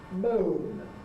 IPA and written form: məʊn (moan)